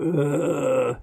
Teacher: basically just a low staccato vibration during speech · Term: vocal fry